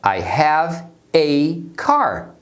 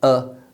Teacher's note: esse tipo de palavra normalmente na fala rápida, é reduzida. Então eles vão reduzir o ei para ã. Então a pronúncia rápida é ã.